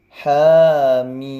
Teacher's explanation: Haknya 2 harokat, mimnya 6 harokat.